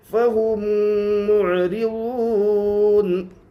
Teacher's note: واو کے اوپر جزم ہے, جزم والے حرف کو پیچھے والے حرف سے ملا کر پڑھتے ہیں. واو ساکن سے پہلے پیش اس لیے واو مدہ ہوگا. واو مدہ کو ایک الف کے برابر کھینچ کر پڑھے. نون کے اوپر زبر ہے, زبر کو حالت وقف میں جزم سے بدل کر پڑھیں گے. · را کے نیچے زیر ہے اس لیے را باریک ہوگی